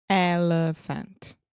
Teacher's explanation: Yeah, so the elephant, the middle sound, that's the schwa.